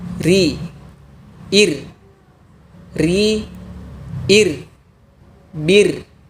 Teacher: Untuk huruf ro tipis, posisi pangkal lidah tidak perlu dinaikkan. Biarkan pada posisi asalnya.